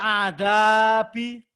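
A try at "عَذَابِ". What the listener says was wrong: Ain. Azabi. Bapak tenggorokannya masih kasar aja nih. Belum halus ya. Azabi.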